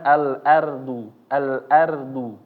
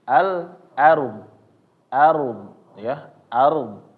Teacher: kita membacanya maka rnya menjadi tebal bukan menjadi tipis